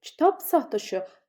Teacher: b-dan sonra samit gəldiyi üçün p kimi tələffüz olunacaq. Yəni onda da cingiltili yox, çar olur.